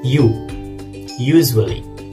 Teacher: Palatal sounds are made with the tongue body, the big, fleshy part of your tongue. The tongue body rises up towards the hard palate in your mouth. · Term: palate sounds